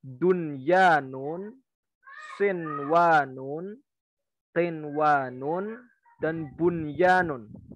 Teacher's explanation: Yang pertama, dunyanun, sinwanun, qinwanun, dan bunyanun. Ya, jadi nun sukunnya itu nyambung dengan wawu, nun sukunnya nyambung dengan ya, dunya dalam satu kalimat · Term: izhar wajib